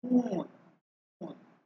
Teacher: ঠোঁট গোল করে আমাদের উ এর মতো উচ্চারণটা হয়